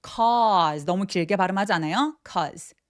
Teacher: 접속사들은 굉장히 강조해서 발음하지 않기 때문에 짧게 cause라고 표현을 많이 합니다.